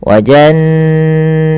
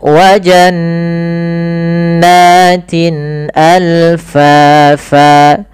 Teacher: Wa jannatin, tin jelaskan kasrahnya sempurna karena bertemu setelahnya hamzah. Maka ini kita namakan dengan izhar halqi.